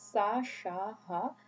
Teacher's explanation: Bangla has 3 spirants, the fricatives, sa, sha, ha. And all of these are voiceless.